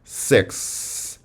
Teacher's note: continuous airflow during the constant so take an example like six the tongue is hitting the alveolar ridge in about the same place as in ta but the difference is that there is still air flow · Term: fricative